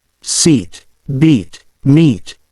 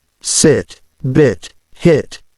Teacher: you should notice that the long I sound is held longer than the short I